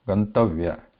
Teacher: तकारोत्तर अकारः उदात्तस्वरः भवति. So if it is pronounced like gantavya, so all in the like a similar tone.